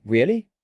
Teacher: With a rising tone, it sounds like a question. But if you say it with a flat tone, it sounds like you don't believe the person.